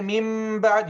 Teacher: change the noon sakina or tanween into meme at the ba. Don't say min ba'd. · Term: qalb